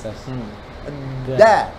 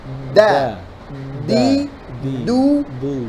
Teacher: Ujung lidah disentuhkan di gigi seri atas. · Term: dal